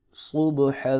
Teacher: صاد کو موٹا پڑھیں گے، با کے اوپر قلقلہ کریں گے